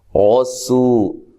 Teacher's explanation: را کو موٹا ادا کرنا ہے، سو واو مدہ ہے، ٹھیک ہے، سین کو باریک سیٹی سے ادا کرنا ہے، اور را کے اوپر زبر یا پیش ہو، را کو موٹا کیا جاتا ہے۔